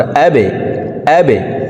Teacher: এই বা কলকলার হরফ নিচের দিকে ধাবিত করে ধাক্কা দিয়ে উচ্চারণ করব।